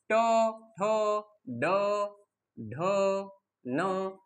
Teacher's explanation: कठोर तालू आणि मृदू तालू यांच्या मधला भाग, त्यालाच आपण मूर्धन्य म्हणतो। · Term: मूर्धन्य वर्ण